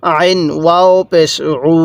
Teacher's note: এই যে পেশের পরে ওয়াও সাকিন, এক আলিফ টানতে হবে।